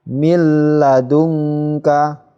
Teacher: nun sukunnya ini, hurufnya ini langsung dimasukkan ke huruf berikutnya yang hidup ini, ke huruf lam, ya. Cara membacanya mil ladungka, tidak mendengung, ya, tidak mil ladungka, salah, ya. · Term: idgham bila gunnah